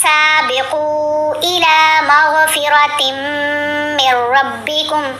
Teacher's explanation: جب تا کو میم سے ملایا تو ہم نے غنہ کیا · یہاں پر سابقوا قاف کو ہم نے 3 الف کی مقدار جتنا لمبا کرنا ہے. مد ہے نا، مد منفصل ہے، اس مد کو مد متصل سے تھوڑا سا کم لمبا پڑھتے ہیں، یعنی اس کی اب پہچان کرانے کے لیے یہ کہا جاتا ہے کہ 3 الف جتنا، ٹھیک ہے.